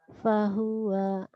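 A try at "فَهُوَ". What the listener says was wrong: Fahuwa, gak ada yang panjang.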